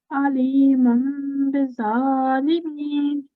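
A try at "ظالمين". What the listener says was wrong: Good, well done, excellent. Yeah, that's correct.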